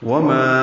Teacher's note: وما، یہ الف مدہ ہے، 2 حرکات لمبا کریں گے